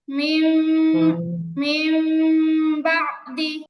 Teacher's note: সেটা হচ্ছে এই মিমটা যেহেতু নুন সাকিন থেকে পরিবর্তন হয়ে আসছে, আপনারা যখন মিমটা উচ্চারণ করবেন তখন ঠোঁটের মাঝখানে একদম সামান্য একটু ফাঁকা রাখবেন, মানে ঠোঁটটা পুরোপুরি মিলে আবার মিলাবেন না। মিম বলার সময় তো ঠোঁট মিলাতে হয়, কিন্তু ইকলাবের ক্ষেত্রে যখন আপনারা উচ্চারণ করবেন তখন হালকা সুই বরাবর ফাঁকা রাখবেন।